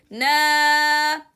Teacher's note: make sure the Alif Mad has no nasal sound